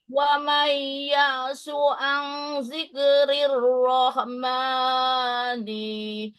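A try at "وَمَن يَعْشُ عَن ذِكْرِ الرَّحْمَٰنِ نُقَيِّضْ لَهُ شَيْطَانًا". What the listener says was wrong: sama tuh rahmani itu panjang.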